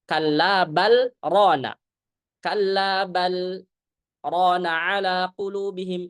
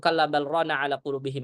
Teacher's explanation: karena ada saktah inilah maka ketika dibaca wasal, saktah itu terjadi dengan izhar.